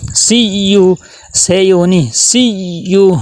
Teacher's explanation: یا کے اوپر تشدید ہے، سختی ہو، ذرا ٹھہراؤ ہو